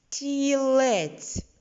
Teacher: Ми чуємо м'який звук тьть стілець чуємо його всередині слова отже в середній клітиночці робимо позначку дві горизонтальні лінії звук т